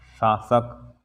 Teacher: तालव्य स, जीभ को तालू में लगाओ, और दंतेय स, दांत में लगाओ जीभ को, दंतेय स के लिए।